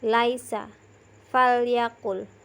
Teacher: bunyi huruf lam ini keluar dari ujung lidah tepat dengan langit-langit atas